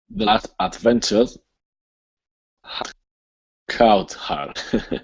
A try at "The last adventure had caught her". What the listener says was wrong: almost there. Instead of cow, it's only an ah. The last adventure had caught her.